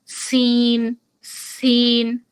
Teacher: দেখুন আলাদা করে দদ, দদ, দদ শেষে কিন্তু দাল রয়েছে, জিহ্বার আগাটা উপরের দাঁতের গোড়ার সাথে কিন্তু লাগবেই গিয়ে। আবার সিন, সিন শুরু হবে নিচের ইনসিসর্স থেকে, আবার শেষ হবে উপরের ইনসিসর্স এর সাথে, জিহ্বার আগাটা